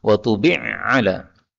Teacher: Ini ain ketemu dengan ain, ini boleh idgham